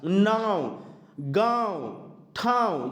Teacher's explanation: नाक और मुंह दोनों का प्रयोग हो रहा है, इसलिए इसे अनुनासिक क्या कहेंगे, अनुनासिक स्वर कहेंगे।